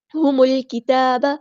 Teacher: میم کو ہم نے لام کے ساتھ ملا دینا، حمزۃ الوصل وہاں ڈراپ ہو جائے گا، لام یہاں پر لام قمریہ اس کو ہم ظاہر کریں گے.